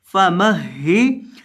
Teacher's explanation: میم زبر ہا مہ، فا مہ، ہا زیر ہی، فمہ ہی، ہا کو آپ نے سختی کے ساتھ پڑھنا ہے کیونکہ ہا مشدد ہے